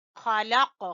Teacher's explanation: خا گلے کے سب سے اوپر والے حصے سے اور قاف کے اوپر کریں گے قلقلہ